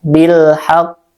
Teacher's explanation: Nah, alif lam bertemu dengan ha itu ha itu huruf qamariah. Jadi lamnya dibaca izhar jelas.